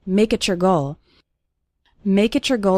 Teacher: when we have a word ending in t followed by the word you or your it often sounds like a CH sound